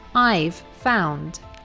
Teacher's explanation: we contract it to only one sound, the sound v. So instead of hearing I have found, what you hear is just the sound of the letter V, as in I've found.